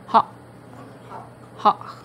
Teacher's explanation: sound made by closing the opening at the back of the throat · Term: glottal stop